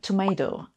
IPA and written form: təˈmeɪtəʊ (tomato)